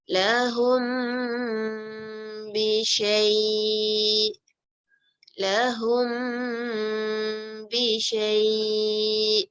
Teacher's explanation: Tu mim mati adalah when mim yang mati yang tak diberi tanda meets ba, say the mim sound with gunna for 2 beats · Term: ikhfa syafawi